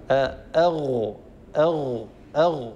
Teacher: ستلاحظون أن الصوت حينما يخرج من الحلق يتجه إلى سقف الحنك الأعلى